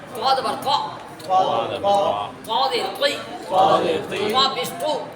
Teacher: طوا جو ہے وہ مفخم ہے اور مستعلیہ ہے موٹا ہوگا